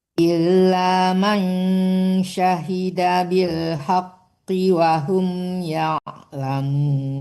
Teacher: wahum nggak boleh terlalu lama tertahan karena humnya tidak dengung.